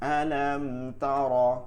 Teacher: মিম সাকিনের পর তা আছে, গুণনা করা যাবে না